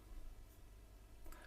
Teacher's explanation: These are produced with the lips and the teeth. Is the unvoiced labiodental fricative.